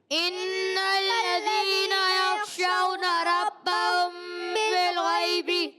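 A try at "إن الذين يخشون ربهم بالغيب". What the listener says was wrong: اب بھی جلدی کیے ہیں، غنہ کیا ہے مگر کم، ٹھیک ہے، لہم مغفرۃ،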